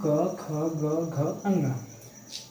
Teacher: क वर्ग जो है आपका कंठ से बोला जा रहा है